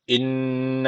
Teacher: Şeddel nun var. Mutlaka bir elif tutuyoruz.